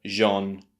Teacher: But the second syllable, the unstressed syllable, is using that schwa sound and it sounds rather English. R. A very sort of relaxed R and the vowel sound or the schwa sound R.